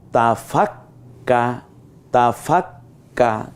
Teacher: খেয়াল করুন, তা ফাক্কা, ওই প্রথমে ফাক মানে যজমলা, তারপর জবরটা আছে, এই তো তাসদিদ। তা ফাক্কা, আমরা কাপটাকে 2বার বলবো, 2টা ক বলবো। তাই প্রথমটা যজমের মতো হসন্তের মতো বলবো, দ্বিতীয়টা আকার দিয়ে বলবো।